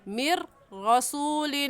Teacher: من ارتضی میں را ساکن سے پہلے زیر آ گئی تو یہ را باریک پڑھی جائے گی، اور میر رسول میں نون ہم نہیں پڑھیں گے کیونکہ تشدید را کے اوپر تشدید ہے